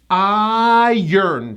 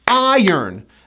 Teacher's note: This is one of the only times in English we do not push the 'r'.